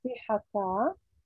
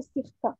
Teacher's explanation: This can lead to the nullification of the vowel in the het, for example, classic sihaka, as opposed to modern Hebrew sihka. The pronunciation omits the half vowel a after the het.